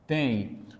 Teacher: o som do M não aparece, ou seja, se fundiu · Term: vogal nasal